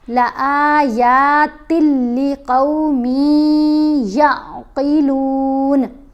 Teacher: لام بھی حروف یرملون میں ہے، یا بھی حروف یرملون میں ہے، یہ والی. تو لام کے اوپر غنہ نہیں کرنا، یا کے اوپر غنہ کرنا ہے